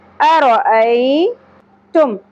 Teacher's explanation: یا ساکن سے پہلے زبر حرف لین ہے نرمی سے ادا ہوگا